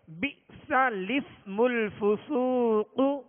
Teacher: لام کو سین سے ملا کر پڑھیں گے · میٹھے میٹھے اسلامی بھائیو، اکثر لوگ بے احتیاطی کی وجہ سے اس کو یوں پڑھتے ہیں بئس اسم الفسوق، بئس اسم الحمزہ پڑھتے ہیں، حالانکہ لام سے پہلے والا حمزہ اور دوسرا حمزہ یہ دونوں حمزہ جو ہے نہیں پڑھیں گے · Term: صورت نقل حرکت